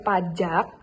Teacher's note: K-nya itu diganti dengan glotal karena sebagai penutup suku kata.